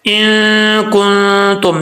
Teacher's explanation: نون ساکن ہے، نون ساکن کا اخفاء ہوگا، ایک الف کی مقدار غنہ کریں گے